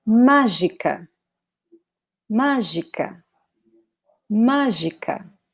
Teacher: notice that this first syllable has an accent, so we should pronounce it as the strongest one.